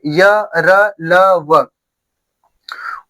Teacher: वे वर्ड जिनका उच्चारण स्वर और व्यंजन के बीच होता है उन्हें क्या कहते हैं, अंतस्थ व्यंजन।